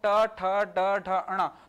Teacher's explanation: जीभ मुड़कर तालु से भी ऊपर वाले हिस्से को टच कर रहा है, इस हिस्से को कहते हैं मूर्धा, है ना। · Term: मूर्धन्य